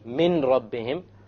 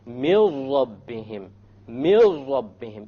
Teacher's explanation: So you don't say min rabbihim, you drop it. You drop the noon and you merge the meme with the ra. And you say, mil rabbihim, mil rabbihim, immediately. · So anytime you have a noon sakina followed by a lam, or you have a tanween followed by a lam, or a tanween followed by a ra, or a noon sakina followed by a ra, you drop the sound of n, and you merge what is before with what is after. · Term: idgham, idgham without ghunna